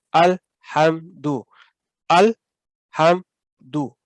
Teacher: کہیں بھی اس کو آپ نے ہلانا نہیں ہے ساکن لام کو